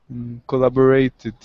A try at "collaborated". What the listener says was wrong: The only thing with collaborated was the intonation. Can you repeat collaborated?